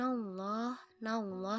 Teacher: lafaz Allah didahului huruf berharakat fathah dibaca secara tafkhim atau secara tebal